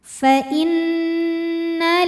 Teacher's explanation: Cara bacanya dengung. Jadi bunyi n-nya tahan sampai ada suara masuk hidung kurang lebih 2 harokat. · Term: gunnah musyaddadah